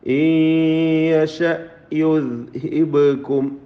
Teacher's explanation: ഈയശ സക്കിനാനൂൻ ഇദ്ഗാം ബിഗുന്ന ചെയ്ത് യായിലേക്ക് ലയിപ്പിച്ച് മണിക്കണം